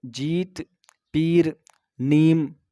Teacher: جس کی آواز ہندی کی ای کی طرح ہوتی ہے، ہندی کے ای کی طرح ہوتی ہے، ای کی، اور تھوڑا کھینچ کر پڑھیں گے اس کو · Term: یا معروف